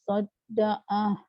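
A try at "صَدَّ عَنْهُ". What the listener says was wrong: Sodda'anhu. Sodda'an. Nak sebut hu tu tak jadi.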